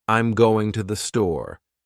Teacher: In a statement like, I'm going to the store, the voice usually falls at the end.